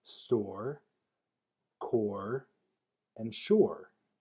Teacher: Or is the transition from mid-back aw to er, as heard in store, core, and shore. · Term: vocalic R